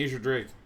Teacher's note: no it looks like it is emphasis on the first syllable